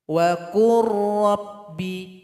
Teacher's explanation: Nah, maka dia mesti dibaca idgham mutaqaribain. Lam ini sudah melebur kepada huruf ra.